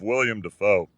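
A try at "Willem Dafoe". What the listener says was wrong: It's not William, it's Willem.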